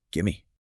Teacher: the V sound often disappears or merges completely with the following M sound. It becomes one smooth syllable.